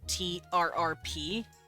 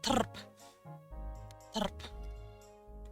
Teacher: They use the R as, the double R as literally a nucleus. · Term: trill R